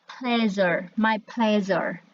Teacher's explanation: Jadi kamu memproduksinya itu ada di lidah kamu itu sedikit melengkung, kemudian lidahnya agak masuk ke tengah-tengah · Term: palatal alveolar consonants